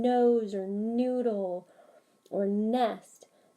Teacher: the tip of the tongue the front part of the tongue is actually coming up and blocking the sound